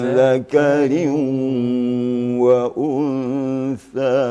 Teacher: wau itu huruf bibir maka bibirnya agak ke depan sedikit harus agak monyong agak monyong sedikit